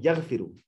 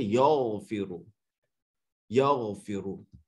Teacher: غائن کی آواز موٹی ہے, اپنے ہونٹوں کو گول کر کے پڑھیں گے